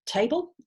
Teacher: But if you have the word table, you've got the vowel A in the first syllable, and the E indicates that there's a vowel in that syllable too. If you transcribe that phonetically, you will put schwa in between the B and the L